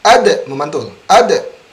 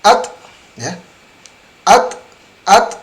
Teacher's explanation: kalau huruf dal memantul, kalau huruf ta berdesis.